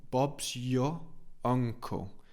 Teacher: okay let's look at the pronunciation so Bob's y Bob's y we don't really pronounce the r of your Bob's your uncle Bobs your uncle Bobs your uncle not anle